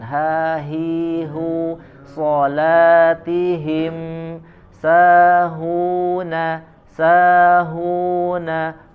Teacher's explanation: Ada huruf H dua di sini ya. Salatihim ya, dari pangkal tenggorokan. Ha hi hu salatihim sahuna sahuna hu ya, dibaca dari pangkal tenggorokan.